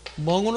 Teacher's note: 자, 먹는이라는 단어가 있을 때 우리가 기억할 수 있는 것은 이때 기억, 먹는이라는 단어가 있고 그 다음에 먹다라는 단어가 있을 때 이때 기억이라고 하는 것은 멍으로 나죠. 소리가 이응으로 납니다. NG로 나오고